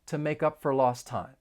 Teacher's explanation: We can link the final consonant sound in make with the beginning vowel sound in up, make up. And then the word for is often reduced and it's just going to sound like fur. It's a much softer sound to make up for lost time.